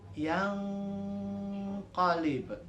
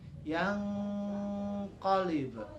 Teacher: sehabis huruf nun yang bertanda baca mati atau sukun itu ada huruf qaf, maka nunnya dibacanya disamarkan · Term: ikhfa